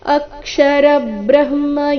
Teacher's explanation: ಅಕ್ಷರ ಬ್ರಹ್ಮ ಅ ಮತ್ತೆ ರ ಮೇಲೆ ಆಘಾತ ಬರಬೇಕು